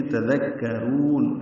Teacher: تذکرون، لال کاف باریک ہے، را پر ہے، را کو لمبا کریں گے، یہ مد عارض للسکون ہے